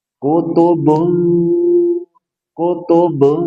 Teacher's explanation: tanwin bertemu dengan qof ikhfa tahan dua sampai 3 harakat dan dengungkan, samarkan dan dengungnya karena qof termasuk huruf istilah dengungnya tebal. Kutubun kutubun tebalkan.